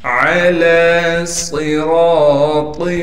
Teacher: صاد کو موٹا کر کے پڑھنے کے ساتھ صاد میں سٹی بھی نکالیں گے